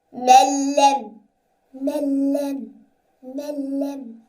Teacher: in this first word, there is lam after noon sakinah. So we must not make ghunna.